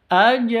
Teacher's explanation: ada Jim sukun qolqala ada di tengah qolqalah sugro harus dipantulkan